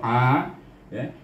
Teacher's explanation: Ain duduk di tengah-tengah halqum juga sama dengan ha